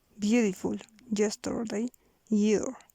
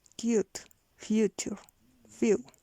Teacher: Semivowel, voiced palatal semivowel.